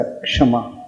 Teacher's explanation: हाँ, छतरी का छ नहीं प्रयोग करना, क्षमा। यानी जब हम उसका उच्चारण करेंगे क्षमा का, तो अंदर से पहले क का देखना उच्चारण अवश्य आएगा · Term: संयुक्त अक्षर